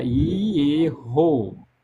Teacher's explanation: Enquanto hebraico você pronuncia e errou, porque esse esse esse re é ele é gultural, ele é pronunciado como um R de da risada. [risadas] Ele é pronunciado aqui no glote mesmo. Ele não é nem pronunciado com a nossa língua, não.